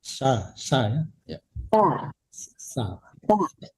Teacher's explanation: Lembut, nggak ada desisan sin ya.